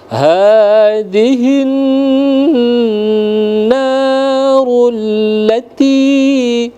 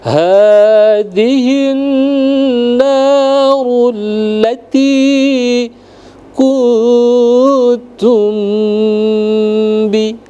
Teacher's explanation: Hadhihi ya, hadhihi, lalu ada alif lam dan nun bertasydid. Maka dia langsung masuk ke dalam nun bertasydid itu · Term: gunnah musyaddad